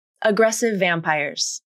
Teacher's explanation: together for example the phrase aggressive vampires can be linked by combining the v consonant at the end of aggressive with the initial v consonant at the beginning of vampires which results in one v sound